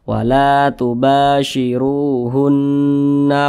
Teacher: nah perhatikan di samping huruf huruf nun bertasydid adalah ghunah musyaddadah cara bacanya digunahkan jadi suaranya itu kita tahan kita panjangkan sejenak